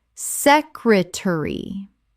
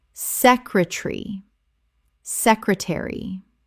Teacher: 3 syllables in British English. The middle syllable collapses.